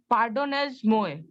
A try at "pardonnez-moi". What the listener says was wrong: Pardonne. Pardonne. Z का sound नहीं है, सिर्फ ए है. Pardonne. मुआ, मुआ